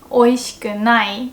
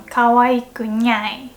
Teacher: you can just change any na sound into nya and you sound like a cat